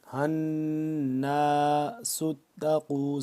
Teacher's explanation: نون مشدد جو ہم نے یہاں پہ غنہ کرنا ہے